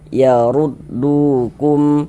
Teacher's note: Mad thobi'i panjangnya dua harakat.